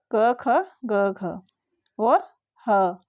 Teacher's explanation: कंठ से निकलती है जो ध्वनि उसको बोलते हैं कंठ स्थान